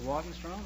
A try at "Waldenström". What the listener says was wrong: No, it's an umlaut on the O. In Sweden, you pronounce the name Waldenström. Waldenström, yes.